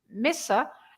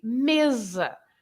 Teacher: Because we have plenty of words that are the same in written, they are the same in Portuguese and in Spanish, but they are pronounced with an S sound, S, in Spanish, and they are pronounced with Z in Portuguese.